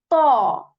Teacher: the tip of our tongue, it touches the back part of our upper teeth with strength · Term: heavy letter